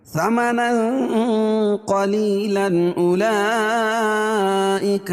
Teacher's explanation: یا مدہ، لن اولئک یہاں مد یہاں اظہار حلقی ہے کیونکہ تنوین کے بعد حروف حلقی کے 6 حرفوں میں سے حمزہ ہے، ٹھیک ہے، تو یہاں اظہار کر کے پڑھیں گے ، ظاہر کر کے پڑھیں گے، ثمنا قلیلا اولئک ما یأکلون